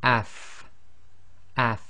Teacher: so in this case it's going to be AF F and you should really be able to feel your teeth coming together your upper teeth coming together with the inside of your bottom lips and by pronouncing it with a sukun you should start to